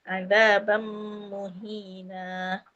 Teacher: azab beserta dengung dua harakat. Azab muhina. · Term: Idgham maal ghunnah